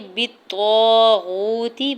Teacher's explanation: بالطاغوت، با کی زیر کو طا مشدد کے ساتھ ملاتے ہوئے پڑھنا ہے، طا کے اوپر زبر ساتھ الف اٹیچ، الف مدہ ہو رہا ہے، واو ساکن سے پہلے غین کے اوپر پیش ہے، واو مدہ ہو رہا ہے، دو حرکت کھینچ کے ادا کریں گے، تا کی زیر کو بغیر کھینچے ہوئے ادا کرنا ہے۔